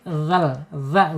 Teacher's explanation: Makhrajnya ada di ujung lidah menyentuh ujung gigi seri ya.